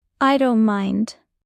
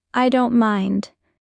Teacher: Notice the T in don't often disappears. · In fast speech, don't loses the T.